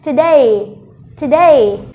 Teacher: Và trọng âm rơi vào âm thứ hai, vậy mình sẽ đọc to âm thứ hai